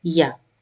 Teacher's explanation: the tongue is raised in between and it is slightly touching on the roof of the mouth